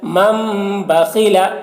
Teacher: تنوین یا نون ساکن کے بعد با آئے تو نون کو میم سے بدل کر غنہ اور اخفا کے ساتھ پڑھیں گے، اس کو اقلاب کہتے ہیں۔